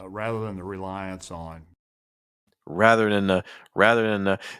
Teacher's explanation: he's not even touching his teeth when he's making that th sounds